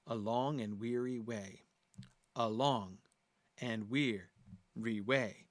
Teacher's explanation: the overall pattern of the syllables, short, long, short, long, short, long, but again, the very words themselves have that shape. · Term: iambic